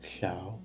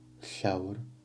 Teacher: the double L, or alveolar fricative, voiceless alveolar fricative